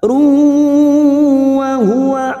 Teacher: Wa quru di mad tanwin bertemu waw idgham bi gunnah siap masuk dan mendengung masuk ke huruf waw dan ditahan selama 3 harokat